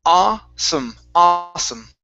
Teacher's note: it's only an ah. There's no oo sound.